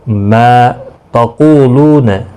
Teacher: قو واو مدہ ہے، لو واو مدہ ہے، 1 الف کی مقدار کے برابر کھینچ کر پڑھیں گے